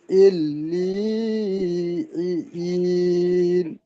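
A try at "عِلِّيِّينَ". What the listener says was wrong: ইল্লি বলে টান হবে না, এই ইল্লি লামটি ইয়ার সাথে যুক্ত হবে। আইন লাম জের ইল, লাম ইয়াজের লি, ইল্লিয়িন। না, ইয়া সাকিন তো এখানে নেই। তাজদিদটি সাকিনের মতো আগে যুক্ত করতে হবে, টান হবে না। ইল্লিয়িন। হ্যাঁ, সাকিন থাকলে টান হবে, আইয়া মাদ্দা হবে। কিন্তু সাকিন নেই, তাজদিদ।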